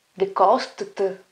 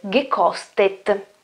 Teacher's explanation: aggiungerò questa E che viene detta fonetica prima di mettere la T finale